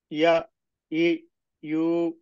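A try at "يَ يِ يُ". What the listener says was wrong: আরেকটু টানবো, হয়। ইয়া ই ইউ।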